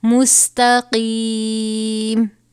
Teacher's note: قاف ہے، حروف مستعلیہ میں سے، قاف کو بھی پر پڑھا جائے گا